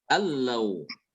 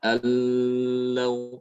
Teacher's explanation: Benar-benar nunnya itu masuk ke dalam lam tanpa disertai dengan gunnah. Tidak dibaca allau ya seperti itu.